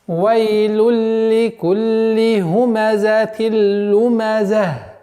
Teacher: При остановке аннулируется танвин, и звук ха переходит, звук та марбута переходит в звук ха. То есть аннулируется, и получается у нас «Вайлюль ликулли хумазатил лумаза».